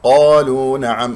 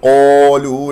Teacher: لا تكور الشفتين، لا إعمال للشفتين في نطق حروف الاستعلاء السبعة، مفخم مرتبة أولى لأنها مفتوح بعدها ألف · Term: القاف مفخم مرتبة أولى